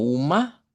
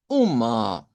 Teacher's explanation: esta A centralizada tiene como un tono más grave que la a simple del español